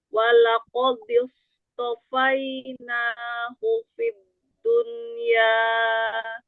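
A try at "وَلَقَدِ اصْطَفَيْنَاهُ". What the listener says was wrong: Ya, jangan terikut tebal. Walaqadi di walaqadistofainahu. Di ujung lidahnya, makrot dalnya majuin lagi. Jangan terlalu banyak punggung lidahnya. Dadidu, dadidu. Disto, disto, disto. Begitu short sukun baru angkat. Disto, disto.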